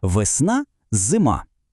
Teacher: Коли ми вимовляємо ці слова, звуки е та и без наголосу звучать майже однаково